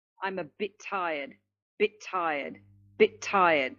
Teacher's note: I'm only producing one T sound. And you can see that I've also used the linking that we just looked at. · We will only produce one. So again, we're going to link the two words together and only have one consonant sound. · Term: sound twinning